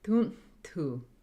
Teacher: Those are 2 dental T's with a voiceless N with U's before and after.